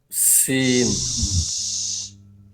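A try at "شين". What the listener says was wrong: শশা শব্দ আসবে শীষ দেওয়ার মতন, শিন কোনোভাবে সয়ের উচ্চারণ হবে না, শি হবে, তালে বসার উচ্চারণ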